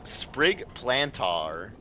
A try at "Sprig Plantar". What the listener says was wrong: Pronounced more like planter.